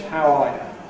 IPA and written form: haʊ ˈɑː jə (how are you)